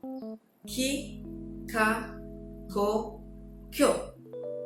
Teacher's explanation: it's actually between the G and the K voice in English. Okay, it's not really gi, or ga, go, gyo, but it's also actually Kyo, okay, is when the G is a bit like the K sound in English.